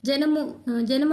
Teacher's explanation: జ అనేది దంత్యానికి టచ్ అయితది